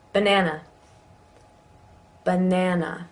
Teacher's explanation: you notice the schwa in the beginning of banana, ba, even though that's an A.